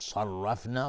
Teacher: صاد از حروف استعلاء و را هم حکمش استعلاء چون فتحه داره